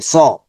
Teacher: আর জবর আসছে, সা হবে না, স, স ঠিক শুধু স থাকবে, স, স। বাংলার সাথে কিন্তু পূর্ণ মিলবে না, স মিলবে না, স একটু মোটা সাউন্ড হবে